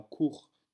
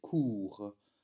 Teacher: dans court, nous avons un ou bref, mais va se prononcer court, avec un ou long